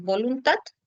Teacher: en voluntad acentúas tu última sílaba.